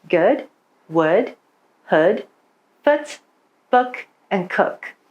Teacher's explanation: words like good or would shifted towards a shorter vowel sound